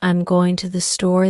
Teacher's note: Rhythm for example in the sentence I'm going to the store the emphasis falls on going and store not I'm or to